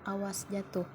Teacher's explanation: panjang pada silabah kedua jatuh diucapkan panjang pada kedua silabahnya jatuh dalam tataran kalimat ucapan panjang pada silaba terakhir bermaksud mencari perhatian atau penyangatan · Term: durasi